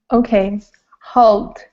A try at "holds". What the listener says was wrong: Okay, give me a D and an S at the end. Holds.